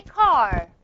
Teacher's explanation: Your tongue is curled backwards.